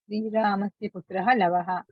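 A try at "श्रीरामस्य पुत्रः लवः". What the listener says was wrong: పరిగెట్టొద్దు. నేను ఎంత నెమ్మదిగా ప్రశ్న వేసాను అంతే నెమ్మదిగా సమాధానం చెప్పండి. శ్రీరామస్య పుత్రః లవః. విడగొట్టండి. ప్రస్తుతానికి అభ్యాసంలో ఉన్నాం కాబట్టి ఎవ్వరూ పరిగెత్తొద్దు. శ్రీరామస్య పుత్రః లవః.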